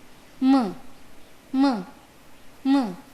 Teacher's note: अस्यापि उच्चारणस्थानं नासिकया सह ओष्ठौ स्तः। यस्य वर्णस्य उच्चारणं मुखेन सह नासिकया अपि क्रियते तादृशः वर्णः नासिक्यः भवति।